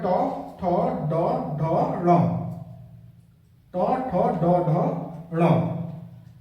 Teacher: ट ठ ड ढ ण तो ये पांचों वर्ण आपके मूर्धन्य में आ जाएंगे